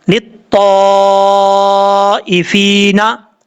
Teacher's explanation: फा के बाद या मद्दा है, एक अलिफ की मकदार, इसको लंबा करके पढ़ेंगे।